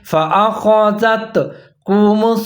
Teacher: جہرۃ، جہرۃ فأخذتكم الصاعقۃ، فا کے اوپر زبر ہے، حمزہ کے اوپر زبر ہے، خا کے اوپر زبر ہے، فآخا، خا کو آپ نے ظاہر کر کے پڑھنا ہے، زال کے اوپر زبر ہے، تا ساکن ہے، زال اور تا دونوں ملا کے پڑھیں گے